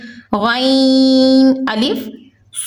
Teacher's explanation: غین حروف مستعلیہ میں سے ہے، اس کو پوری یعنی موٹا پڑھیں گے